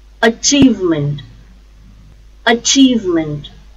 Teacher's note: the stress is on second syllable chief